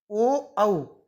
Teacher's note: ओ, औ, इनका उच्चारण स्थान है कंठ ओष्ठ